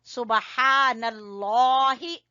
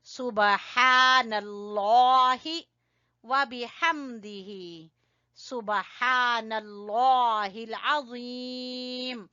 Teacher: लफ्ज अल्लाह को मोटा पढ़ेंगे, हा को अलिफ मद्दा की वजह से खींचेंगे।